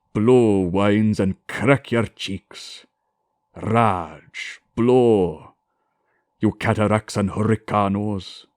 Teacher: a rolled R, which is like a snarl